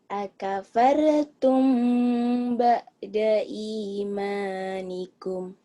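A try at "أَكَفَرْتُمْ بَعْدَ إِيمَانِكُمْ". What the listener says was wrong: Kamu tahu kurangnya di mana? Di mana? Kurang nahan sama di ainnya neng itu tuh. Akafartum ba'da imanikum.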